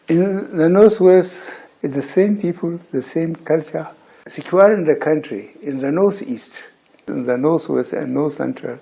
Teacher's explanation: he likes to replace the TH, the voiceless consonant sound, with a letter S